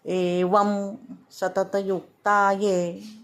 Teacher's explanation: एवम म अर्धा म असा उच्चार करायचा आहे